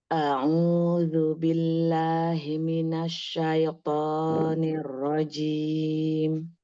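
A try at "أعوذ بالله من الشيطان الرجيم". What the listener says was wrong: Nah, syai'nya jangan terlalu cepat. Syaitoni.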